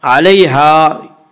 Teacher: یالین وہ یا جو ساکن ہو اس سے پہلے زبر ہو، یالین کو نرم آواز کے ساتھ پڑھیں گے۔ علیہا الف مدہ، الف ہمیشہ مدہ ہوتا ہے، الف سے پہلے زبر ہوتا ہے، الف مدہ کو ایک الف کے برابر کھینچ کر پڑھیں گے۔